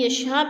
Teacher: حروف مدہ کے بعد حمزہ اسی کلمے میں ہے تو مد متصل 4 الفی مد ہے. 4 الف کے برابر ہم نے اس کو کھینچ کر پڑھنا ہے.